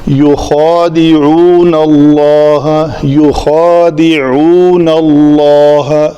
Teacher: اللہ کے لام کو پر پڑھنا ہے. يُخَادِعُونَ اللَّهَ وَالَّذِينَ آمَنُوا وَمَا يَخْدَعُونَ إِلَّا أَنفُسَهُمْ.